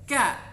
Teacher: Aqsal lisan juga, aqsal lisan, tetapi dia lebih bawah sedikit atau lebih maju sedikit daripada huruf qa. Jadi qa ini aqsal lisan yang bagian atas sedikit, kemudian ka itu aqsal lisan yang bagian bawah sedikit atau boleh disebut dengan agak depan daripada huruf qa. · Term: huruf ka